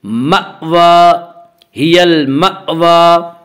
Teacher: واو کے اوپر کھڑا زبر ہے. کھڑا زبر کو ایک الف کے برابر کھینچ کر پڑھیں گے